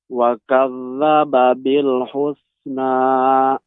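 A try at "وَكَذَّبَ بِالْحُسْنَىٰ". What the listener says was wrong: Huruf C-nya lebih ditampakkan lagi. Wa kadzdzaba bil husna.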